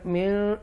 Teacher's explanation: یہاں پر من نون ساکنہ کے بعد اکفا لیٹر ہے قاف، تو لہذا گنہ کریں گے